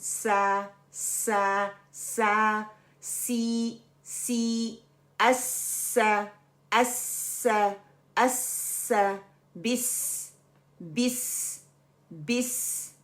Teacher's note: जुबान की नोक को सामने के नीचे वाले दो दांत जो है ना उसके किनारों से मजबूती से लगाने से अदा होता है। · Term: सीन